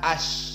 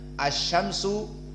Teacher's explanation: ditasdidkan Sya Alif lamnya diihmalkan ihmal maknanya Tidak Dianggap maka di sini masuk langsung kepada Sya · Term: alif lam asyamsiyah